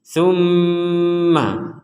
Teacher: mim bertasydid ini harus dibaca dengan dengungan, harus ada dengung.